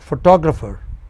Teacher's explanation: photographer, four syllables, and the second syllable from the beginning is stressed.